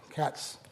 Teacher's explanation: cats there's a hissing sound, but there's no voicing. So, that's not a Z sound, it's an S sound. So, that's not plusvoiced.